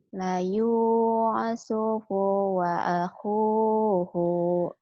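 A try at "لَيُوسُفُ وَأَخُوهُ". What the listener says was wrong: Kenapa jadi layu supu? Layu supu. Biasa wae. Jangan diteken. Layu supu wa akhuhu.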